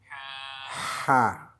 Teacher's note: Donc, l'air sort au haut de la gorge.